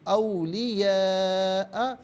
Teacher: آباءکم و اخوانکم و اخوانکم اولیاء، یہاں پر آپ دیکھیں مد کی علامت ہے، مد متصل ہے، 4 سے 6 الف کی مقدار کھینچ کر پڑھنا لازمی ہے۔